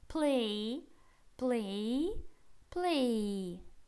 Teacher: мы уходим немного в и мы не в й уходим а в и